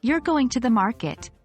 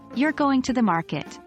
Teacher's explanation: we tend to raise our pitch at the end of a question, but we lower it at the end of a statement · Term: intonation